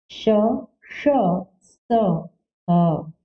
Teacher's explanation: जिन व्यंजनों का उच्चारण करते समय मुख से निकलने वाली तेज वायु मुंह के रगड़ खाने के कारण ऊष्मा पैदा करती है, ऊष्म व्यंजन कहलाते हैं।